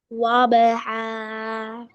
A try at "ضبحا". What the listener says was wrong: Mark the word bata. yeah, not ta. Where is ba?